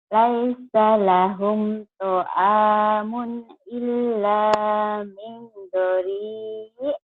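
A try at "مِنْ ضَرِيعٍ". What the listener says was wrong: Dori, tapi ainnya ada agak ketahan. Dori gitu. Dori ya. Dori, Dori gitu.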